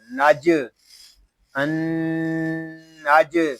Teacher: جیم ساکن ہے، اس میں کلکلا خوب ظاہر ہوگا. میم تا پیش مس ان نجم.